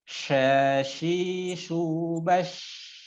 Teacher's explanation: tengah lidah ke langit-langit tidak serapat jim. Bergemuruh angin di dalam mulut ketika mengucapkannya. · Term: Shin